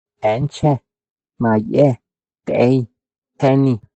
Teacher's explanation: La vocal semiabierta anterior